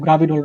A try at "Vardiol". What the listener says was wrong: Vardiol. Vardiol. The G is silent আর কি, Vardiol.